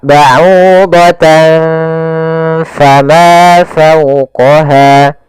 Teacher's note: menyisakan ya antara bunyi nunnya, tapi disamarkan kepada makhraj huruf setelahnya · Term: ikhfa